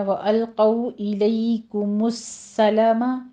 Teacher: لئی میں یا لین ہے، آگے کاف کے اوپر ضمہ ہے، ہونٹ گول کر لیجئے۔